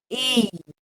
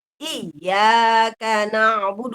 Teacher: Ar-rohwah itu adalah mengalir. Jadi ya-nya harus kita alirkan saat sukun